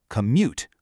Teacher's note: The stress is right on the second syllable.